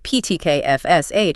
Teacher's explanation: >> But for unvoiced or voiceless sounds like PTK, FSH, or the th and think, your vocal cords are held apart. So there's no vibration. It's just air passing through.